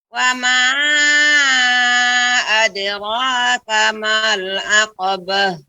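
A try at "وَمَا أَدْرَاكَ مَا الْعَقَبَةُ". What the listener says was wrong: Lebih dibuka Ibu. Aqabah. Bah dengan aqabah. Beh. Bah. Ya. Ya, seperti itu.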